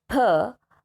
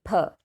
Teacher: it should be aspirated so you know you need to puff out some air